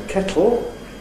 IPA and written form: ˈkeʔo (kettle)